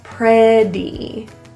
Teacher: The two T's in pretty are pronounced as a flap T. Sounds like a quick little D.